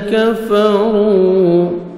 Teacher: کفروا، کاف کو باریک پڑھیں گے، را کو عمر پیش ہے، را کو موٹا کر کے پڑھیں گے اور 1 سیکنڈ کھینچیں گے، واو مدہ ہے